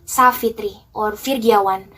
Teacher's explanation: the F and V have the same sound without any obstruction